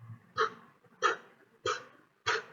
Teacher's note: there is no sense of vibration on your throat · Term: voiceless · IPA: /p/